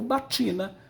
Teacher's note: Com o passar do tempo, esse A caiu, virou batina. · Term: aférese